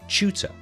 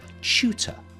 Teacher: if you want to sound very British as I'm sure you do. Then you say chu like that. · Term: ch sound